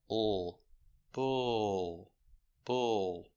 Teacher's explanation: The L is a dark L after the sound. So the sound is in the back. Not but bull.